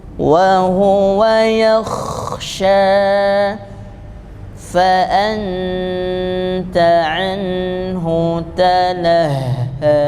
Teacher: Kha-nya itu tidak tertutup makhrajul hurufnya, sifatnya hembus.